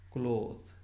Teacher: words such as cloth, gone, off, often were pronounced with O instead of A, so that often and orphan were homophones.